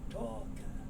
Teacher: The L is not sounded, and the K moves over, so you get talking.